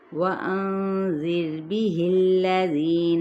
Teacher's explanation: باؤ ہونٹوں کی نا تمام گلائی کے ساتھ، نون پہ اخفاء حقیقی، را ساکن ما قبل کیا ہے کسرہ، یعنی زیر ہے تو را باریک پڑا جائے گا. زیر زیر کر کے ادا نہیں کرنا.